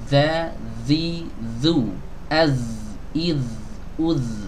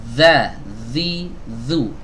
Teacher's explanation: ketika mengucapkan huruf zal ini ada sedikit gesekan ya teman-teman ya, antara ujung lidah ini dengan ujung gigi seri atas kita itu menggesek